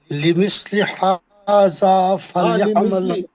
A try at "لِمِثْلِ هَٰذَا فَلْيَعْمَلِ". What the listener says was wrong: پھر آپ لمثلی کیوں نہیں پڑھ رہے تھے جب سے؟